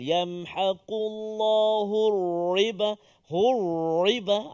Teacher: Jadi yang pertama, yamhaqullahu ri, itu tipis ataupun tarqiq. Ra yang berbaris kasrah, baris bawah. Jangan baca tebal.